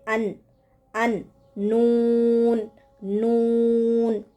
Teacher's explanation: نون، نون. زبان کے کنارے کو اوپر کے سامنے والے 4 دانتوں کے مسوڑوں کے ساتھ لگانے سے نکلتا ہے